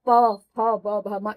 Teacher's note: प वर्ग का उच्चारण स्थान ओष्ठ होता है, इसलिए इन पांचों को हमने ओष्ठ उच्चारण स्थान होने के कारण इसको हमने प वर्ग में रखा है। प बोलने के लिए हमने दोनों ओंठ को जोड़ना पड़ता है, तब प फ ब भ म इस तरह से उच्चारण होता है, या ध्वनि इस तरह से बाहर आती है।